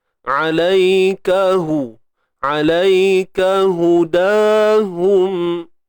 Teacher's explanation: So hu ni pada depan, muncung bibir tuan-tuan perempuan, sebab dia berbaris hadapan.